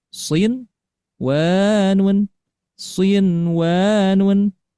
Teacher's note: Dan disebut dengan istilahnya izhar mutlak. Maka bacaannya pertama ini tidak didengungkan, kemudian tidak dileburkan, tidak ditahan, dan bacaannya jelas